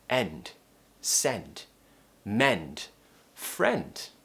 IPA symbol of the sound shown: e